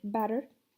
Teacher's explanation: la T intervocálica se pronuncia como una R, por ejemplo, la palabra butter pasaría a ser butter.